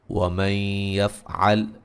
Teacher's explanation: نون ساکن کا یہاں ادغام مع الغنہ ہے